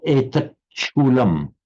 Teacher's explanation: However, by euphonic mutation, the ta, when a final ta meets an initial sh, it changes to a ch